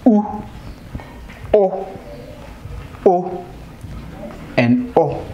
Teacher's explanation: in producing these vowels the vibration is felt at the back part of you know the tongue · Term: back vowels